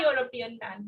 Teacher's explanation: यूरोपियन की sound ए sound नहीं है, य साउंड है, तो हम यूज करेंगे साथ में अ.